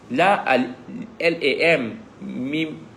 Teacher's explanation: Jadi lam nak masuk mim tu, huruf lam dengan mim dia mesti dengung sebab dia idgham mislain. Mim bertemu dengan mim kan.